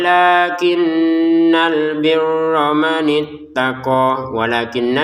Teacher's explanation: nun bertasydid didangungkan